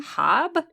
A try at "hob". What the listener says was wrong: you pronounced it all American on me. You said hob. Like, how would you pronounce H-A-B? It's not that different to hob.